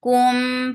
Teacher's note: Attach with mim and this is idgham with gunna. So keeping the sound in your nose for a longer time. Mim and 2 counts long.